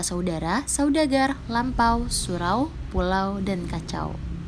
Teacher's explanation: diftong naik menutup mundur, atau yang biasa kita dengar au